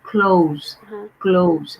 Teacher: So the OU sound. Okay, so from big O to small O, like that's the position of your mouth